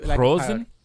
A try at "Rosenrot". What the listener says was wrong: Rosenrot. Yeah, it's more from the throat. The R.